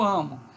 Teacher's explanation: não sai aqui nem o U nem o O propriamente, mas essa vogal aí que é intermediária, essa é uma variante fonética.